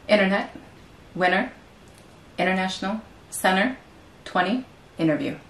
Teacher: Donc faites bien attention donc, à ce T qu'on va omettre en anglais américain.